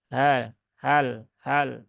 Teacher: Letak huruf H itu ada di ya, tenggorokan yang paling bawah